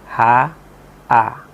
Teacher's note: Jadi huruf yang berbunyi A dan H, A dan H itu keluar dari tenggorokan yang paling bawah.